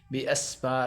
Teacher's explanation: سین کو سیٹی کی آواز نکالنی ہے